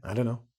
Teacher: They drop the t, push it together and it's: I dunno. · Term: Blended speech